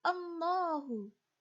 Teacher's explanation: bacaan tafhim atau tebal, karena sebelumnya didahului oleh harokat domah